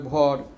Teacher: শব্দের আদিতে ওকারটা অকার হয়ে যায় আমরা ধরো রাড়িতে বসে বলি চোর ঝাড়কন্ডিতে বলবে চর ভরটাকে বলবে